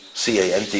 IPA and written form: kα:nt (can't)